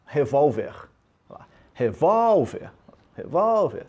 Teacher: uma paroxítona sílaba forte na penúltima posição né uma paroxítona terminada em R revólver revólver revólver você vai · Sílaba forte, o vol. Paroxítona. Terminou em R.